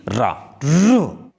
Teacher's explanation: उच्चारण करते समय कपकपाहट हो या थरथराहट हो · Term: प्रकंपित